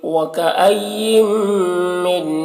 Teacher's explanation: نون کو میم سے بدل کر غنہ کے ساتھ پڑھیں گے، اس کو ادغام ناقص کہتے ہیں۔